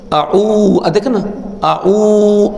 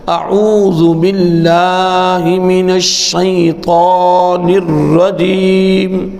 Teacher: آ کو جلدی پڑھ کے نا او کو لمبا کیا کریں